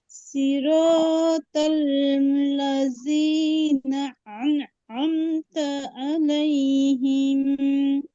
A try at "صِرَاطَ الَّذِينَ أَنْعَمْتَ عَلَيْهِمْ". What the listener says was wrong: দুইটা সংশোধনী মৌলিক, একটা হচ্ছে জালের মাখরাজটা ভালোভাবে আদায় হয়নি, এটা হচ্ছে জিহ্বার আগা সামনের ঠিক দুই দাঁতের আগায় লাগবে।